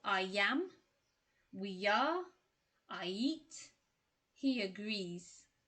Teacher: to help you move smoothly from one vowel to another so we use the yu sound when one word ends in i e and the next word begins with another vowel